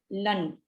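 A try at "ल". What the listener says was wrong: La only, lakara. La, not learn.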